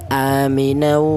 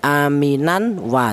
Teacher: cara bacanya tanwin ini langsung menyatu ke huruf wawu ini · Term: idgham